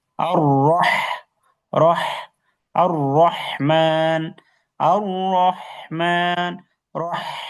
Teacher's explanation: গলার মাঝখানে চিকন অস্বাভাবিক স্বরে। যেমন আমরা যদি কেউ ফ্যাস ফ্যাস করে কথা বলি, তাহলে বলে, "এই এরকম অস্বাভাবিক ভাবে কথা বলছে কেন?" এরকম আওয়াজ হবে।